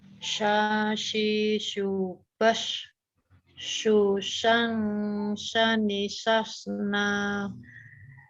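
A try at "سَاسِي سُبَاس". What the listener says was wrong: Pendek. Nah, nanya pendek. Tempat lidahnya dipertahankan. Yang penting pendeknya berusaha jangan diseret.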